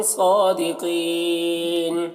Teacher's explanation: میم میں اظہار شفوی ہو رہا ہے، صادقین صاد کو پر پڑھنا ہے، کھڑا زبر ہے، کھینچ کر پڑھیں گے، قاف کو پر پڑھنا ہے اور یہاں پر وقف کریں گے تو یہاں پر بھی مد عارض وقفی ہوگا۔